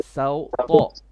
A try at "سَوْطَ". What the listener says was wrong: Make it light. So don't press your tongue.